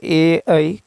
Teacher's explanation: कंठ तालव्य से है